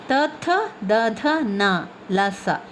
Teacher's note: ಇವುಗಳು ಹಲ್ಲುಗಳ ಸಹಾಯದಿಂದ ಹುಟ್ಟುತ್ತದೆ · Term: ದಂತವರ್ಣಗಳು